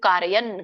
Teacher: ಮತ್ತೆ ನಕ್ಕೆ ವ್ಯಂಜನ ಇದೆ ಹಾಗಾಗಿ ನೀವು ಅಲ್ಪವಾಗಿ ಉಚ್ಚಾರಣೆ ಮಾಡಬೇಕು ಕಾರಯನ್ ಕಾರಯನ ಅನ್ನಂಗಿಲ್ಲ ಕಾರಯನ್ ಕಾರಯನ್ ಅರ್ಥ ನೋಡ್ಕೊಂಡು ಬರೋಣ ಸರ್ವ ಕರ್ಮಾಣಿ ಮನಸ